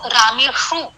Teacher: आजकल सारे लोग यही उच्चार करते हैं, दे प्रोनाउंस दिस शकार, दिस इज तालव्य, इसका उच्चारण स्थान है तालु। शकार का उच्चारण स्थान है मूर्धा, सो दैट इज मूर्धन्य। तो ये जो मूर्धन्य शकार है उसका तालव्य शकार उच्चार करना, इसको स्थान विवर्जित कहा जाएगा, गलत उच्चारण स्थान का प्रयोग करना।